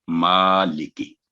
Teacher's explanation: مالکی تو یہ مالکی نہیں ہوگا، یعنی مالکی یوم الدین نہیں، مالکی. میم پر کھڑی زبر ہے، اس کی آواز 2 سیکنڈ لمبی کریں گے، تو لی اور کی 1 سیکنڈ